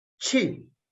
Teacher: So in Chinese, the tone, the pitch is fourth tone. It's very from high to low and very, very decisive to say qi.